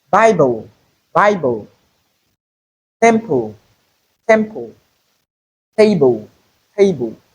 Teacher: So in all these words we have the Slavic consonant. The first syllable of each word has a vowel sound but the second syllable does not have a vowel sound but it is still considered a syllable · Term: syllabic consonants